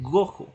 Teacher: se ve nuevamente afectada la vibrante y especificamos por qué la reemplazo, que en este caso es esa velar oclusiva de la G